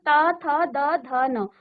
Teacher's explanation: त आपकी जीभ को स्पर्श कर रही है आपकी। आपके दांतों को स्पर्श कर रहा है जीभ। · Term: दंत्य